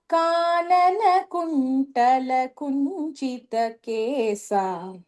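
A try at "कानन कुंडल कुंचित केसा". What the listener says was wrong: So kundala. So not kuntala, kundala. In Tamil, we only have ta, so we might say kuntala, but the pronunciation is kundala.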